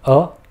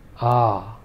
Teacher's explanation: the first short vowel was just a short rap of a sound, whereas the longer vowel was more drawn out. Also, in this case, the vowel sounds themselves are distinct.